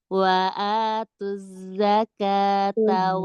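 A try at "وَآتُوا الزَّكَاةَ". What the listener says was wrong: Tajam lagi Mbak. Huruf zai tajam. Azza wa atuzza. Oke, kayak gini wa atuz. Lidah belakang nggak kenceng ya? Wa atuz nggak gitu. Wa atuz. Lidah belakang nggak kenceng. Biasa aja normal. Jadi dia akan fokus suara di ujung lidah.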